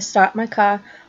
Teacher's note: she dropped her R in some of the words that had an r